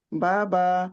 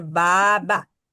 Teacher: पहली बा जो है उसके आगे अलीफ है तो इसका मतलब है मद है, उसे खींचना है 2 हरूफ के बराबर, 2 काउंट यानी के 2 हरकत के बराबर।